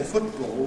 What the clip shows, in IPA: ˈfʊʔtbɔːl